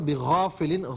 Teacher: باقی آپ نے صحیح پڑھا. بغافل، غا کو غین الف زبر غا، اس کو ذرا ایک الف کی مقدار کھینچ کر پڑھنا